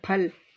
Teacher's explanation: फा बोलने पर दोनों होंठ जुड़ जाते हैं